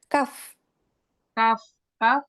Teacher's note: pangkal lidah bertemu dengan langit-langit yang keras